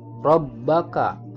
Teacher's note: Rabbaka, huruf ro-nya dibaca tafkhim karena berharokat fathah. Kemudian huruf ba di tasdid, maka membacanya harus ditekan.